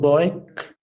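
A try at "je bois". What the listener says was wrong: না, ও আই এর সাউন্ডটা তো ঠিক এখনো হয় না। বোয়া হবে, তাই না? বি ও আই এই 3টা লেটার নিয়ে এখানে এস অ্যাড করতে হচ্ছে, হ্যাঁ।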